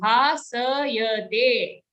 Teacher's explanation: Don't say bhasyate, it's a full sa sound.